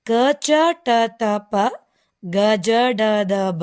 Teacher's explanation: ಈ ಒಂದು ಅಕ್ಷರಗಳನ್ನು ನಾವು ಕಡಿಮೆ ಉಸಿರಿನಿಂದ ಉಚ್ಚರಿಸಲ್ಪಡುತ್ತೇವೆ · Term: ಅಲ್ಪಪ್ರಾಣಗಳು